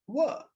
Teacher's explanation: a voiced labial velar semivowel